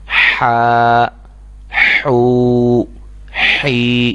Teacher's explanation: یہ آواز ہا کی آنی چاہیے کیونکہ یہ حلق سے ادا ہوتی ہے اور وسط حلق کے درمیانی حصے سے ادا ہوتی۔